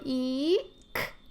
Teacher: e is produced at the very very high and back position so by doing that they're already in a position where they're